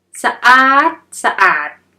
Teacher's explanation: Change the last syllable of the first word to a high tone. อาด becomes อาด Then put 2 words together.